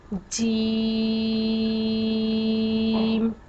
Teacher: جیم کو ہم 5 الف کے برابر لمبا کرتے ہیں